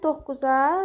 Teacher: Doqquz cingiltillilərə aid olduğuna görə doqquzda birinci k olur. İkincisi olduğu kimi q alır. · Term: qoşa q